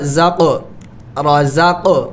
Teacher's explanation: رزق، یہاں پہ دیکھیں قاف حروف قلقلہ میں سے ہے تو قاف کے اوپر سکون ہے تو اس پر قلقلہ کرنا ہے، یعنی اس کو ہلا کے پڑھنا ہے